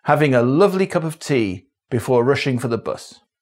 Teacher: many RP speakers in the north use /ə/ - schwa - in STRUT words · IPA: [ə]